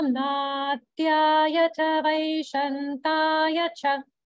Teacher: Same thing with the vaishantaya. Upper swara is only on the final ya.